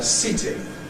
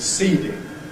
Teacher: ‘Seating’ doesn’t last as long as ‘seeding’; we get clipping before the /t/.